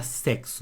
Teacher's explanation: Na palavra sexo, esse X tem som de CS. Então eu tenho 4 letras aqui, ó, mas eu tenho 5 sons, 5 fonemas, porque esse X tem 2 sons.